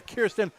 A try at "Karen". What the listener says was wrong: keeping saying an S?